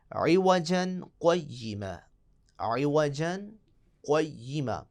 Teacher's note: 2 حرکتوں کی گنجائش کے برابر آپ نے یہاں رکنا ہے اور اپنا سانس بھی نہیں توڑنا۔ اور جیسے 2 حرکتوں کے برابر رکیں گے تو پھر آپ نے اگلے کلمے کو پڑھ لینا ہے۔ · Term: سکتہ